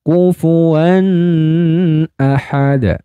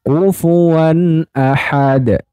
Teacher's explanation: Wan kufuan wa bertemu dengan Nun nah bunyinya seperti itu jadi bunyi Nun sukunnya pada tanwin fathah ini dibaca jelas tidak boleh ditahan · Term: zhar halqi